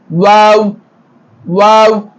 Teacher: இரண்டு உதடுகளையும் குவிப்பதை போன்று சொல்லும்போது வாவ் வெளியாகும்